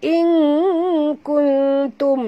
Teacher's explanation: Sorokkan bunyi nun ke dalam kaf disertai dengan dengung dua harakat ikhfa hakiki